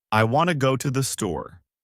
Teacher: In this sentence, want and store are stressed, and the other words are said quickly and softly. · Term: Sentence stress